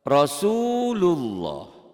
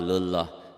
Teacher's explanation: Allah, seperti bunyi O bila didahului oleh huruf yang berbaris fathah atau domah. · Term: tebal